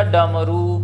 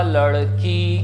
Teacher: आपकी जिवा ऊपर तरफ जाती है फिर नीचे चली जाती है इसलिए इसको क्या कहते हैं उत्क्षिप्त व्यंजन कहते हैं